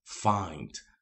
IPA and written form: faɪnd (find)